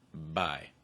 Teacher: you should really make sure that your throat is vibrating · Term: voiced be